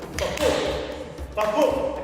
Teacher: The iambic pentameter, the iamb is a heartbeat, ba-boom. It's an unstressed followed by a stressed syllable.